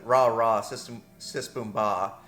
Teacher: In English, when you go with ra, you're pulling like the tip of the tongue back towards the palate. In Japanese, it's kind of halfway between where the English hard R and the English L, la sound would be, where you're kind of pushing forward towards your teeth.